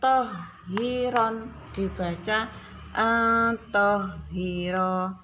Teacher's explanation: Tohiron, ronnya ini bacaan mad iwad, jadi bacanya satu tapi panjang.